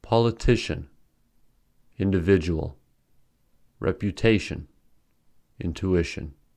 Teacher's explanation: the following words have stress on the third syllable